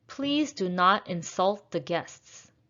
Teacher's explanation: Insult is a verb, so we should stress the second syllable.